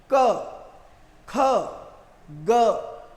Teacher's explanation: और जिनका उच्चारण करते हुए बाधा होती है, जैसे मैं कहता हूं क, ख, ग, तो यहां गले में कंठ में हवा रुककर फिर बाहर आ रही है